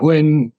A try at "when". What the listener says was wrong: has to be, you have to sound the H a little bit. Not when, but when.